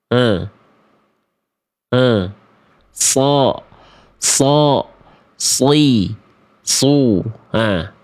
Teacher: tempat keluar dari huruf shad itu dari ujung lidah yang sejajar atau disentuhkan atau mengarah ke gigi sari bawah. Ya, mengalirkan desisan yang lembut.